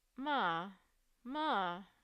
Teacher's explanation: let's say instead you have three five three that would be first you start mid at level three and then rise to five and then drop back down to three